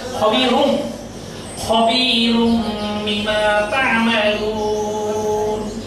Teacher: এই বাক্যটির মধ্যে তানবিনের পরে বা অক্ষর এসছে, এই জন্য এখানে তানবিন উচ্চারিত হচ্ছে না, মূলত উচ্চারণ হওয়ার কথা ছিল খবীরুম বিমা তা'মালুন, কিন্তু এটি তেলাওয়াতের সৌন্দর্য বিনষ্ট করে। তাই তেলাওয়াতের সৌন্দর্যের জন্য এখানে বা অক্ষর আসার কারণে এখানে একটি মিম উচ্চারিত হবে, অর্থাৎ এখানে দুই পেশ উচ্চারিত না হয় এক পেশ উচ্চারিত হবে এবং মিমের উপর একটা সাকিন ধরতে হবে। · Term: ইকলাব